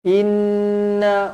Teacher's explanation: wajibul gunnah, dengung dua harakat